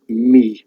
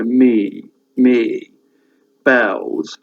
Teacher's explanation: The Welsh don't, when they pronounce their vowels, they don't diphthongize